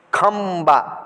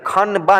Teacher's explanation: नाक से आवाज़ निकालते हैं और उसकी आवाज़ जो है आधा नौ की आवाज़ निकलती है, यानी आधा नौ की आवाज़ निकलती है। और कभी कभार जो है आधा मौ की भी आवाज़ निकलती है